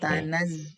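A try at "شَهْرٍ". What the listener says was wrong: Ada huruf H-nya. Syahru. Syahru.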